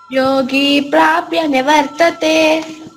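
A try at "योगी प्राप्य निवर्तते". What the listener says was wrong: వెరీ good.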